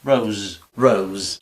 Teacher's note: esta S intervocálica ya es sonora